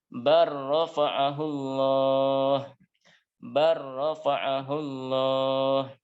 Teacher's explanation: lam sukun bertemu dengan ro. Ya. Bal dibaca menjadi bar, masuk ke huruf ro. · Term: idgham kamil